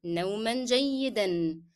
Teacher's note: نوما will be pronounced with the sound of N because I connected to the following word. نوما جيدا. And again, جيدا will be said with the sound of N because we are, yes, we are stopping, but we will not drop here because the sound of N is part of the word.